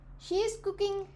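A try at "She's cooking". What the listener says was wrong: She is cooking. She is को she's बोलना है. She is cooking.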